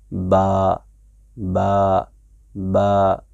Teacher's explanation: बा का जो मखरज है वह है दोनों होंठों का तरी वाला हिस्सा, यानी होंठ जो है, होंठों का ये वाला हिस्सा अंदर वाला हिस्सा है, इसके साथ इससे अदा होता है ऐसे बा बा बा, बिस्मिल्लाहिर्रहमानिर्रहीम, बिस नहीं बोल सकते हैं।